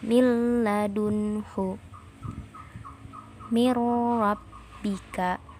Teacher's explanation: Pada waktu mengidghamkan, suara harus ditasydidkan kepada huruf lam atau ro seraya menahannya sejenak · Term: idgham bila gunnah